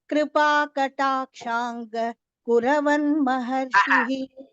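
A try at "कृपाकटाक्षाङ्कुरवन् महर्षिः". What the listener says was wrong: கிருபா கட்டாட்சாங்க குரவன் இல்ல, கட்டாட்சாங்குரவன்.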